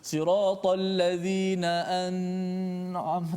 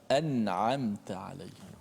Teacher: Jadi kita kena baca dengan jelaskan nun mati tanpa boleh kita memanjangkan. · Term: izhar halqi